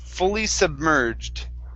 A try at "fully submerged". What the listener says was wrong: Fully submerged. Fully submerged.